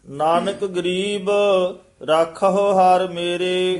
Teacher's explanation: ਨਾਨਕ ਪਦ ਤੇ ਵੀ ਥੋੜਾ ਠਹਿਰਾ ਦੇ ਕੇ ਗਰੀਬ ਪਦ ਤੇ ਵਿਸਰਾਮ ਲਾ ਦੇਣਾ